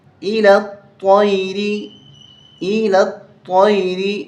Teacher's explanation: لام کو طا کے ساتھ ملائیں گے، یا الف لام یہ تینوں چھوڑ دیں گے، تین حرف. الی الطیر، طا کو موٹا کرنا ہے، تیری نہیں پڑھنا.